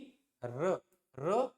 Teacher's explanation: र मूर्धन्य ध्वनि है तालव्य नहीं है